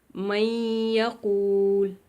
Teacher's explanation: یعنی من نون تھا تو نون کو یا میں داخل کریں گے، من، لیکن ساتھ غنہ بھی کریں گے